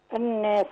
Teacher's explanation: النون دي مشدده بتاخد حركتين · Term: حرف غنه مشدد